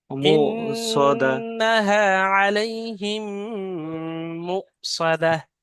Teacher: ইন্নাহা আলাইহিম মুসাদা মু সদা, এখানে হামজা আছে, আর হামজা যুক্ত সাকিনকে একটু ঝাটকা দিয়ে পড়তে হয়।